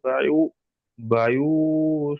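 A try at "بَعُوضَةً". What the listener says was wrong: নয়, বাউ। আইন ও পেশ উ, বাউ দতান।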